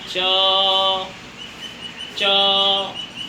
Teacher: जब आकर के हम च बोलते हैं तब हमारी जीभ जो है ऊपर हमारे तालू पर लगती है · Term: तालव्य